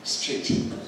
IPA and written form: striːt (street)